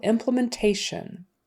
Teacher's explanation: for implementation the syllable stress is on the next to the last syllable